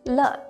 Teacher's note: le is also a neutral tone which means it's short and brief with no tone marks on top the itself looks kind of looks like a fishing rod with